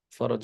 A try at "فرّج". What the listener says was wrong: فرج, right? فرج with a shadda on the ra, I'm saying.